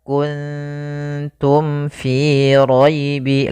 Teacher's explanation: Maka mim itu kan rapat ma. Maka di sini harus jelas suara mimnya, tidak boleh ditahan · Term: izhar syafawi